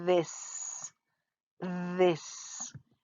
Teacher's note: my tongue is between my teeth and it kind of vibrates a little bit